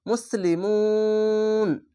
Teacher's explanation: যেখানে তিন আলিফ টেনে পড়বেন মাদ্দে আরজি হয়ে যাবে